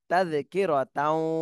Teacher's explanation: তানভিনের পরে ঈদগামে বা গুন্নার হরফ ওয়াও এসেছে, এই জন্য গুন্না সহ মিলাতে হবে।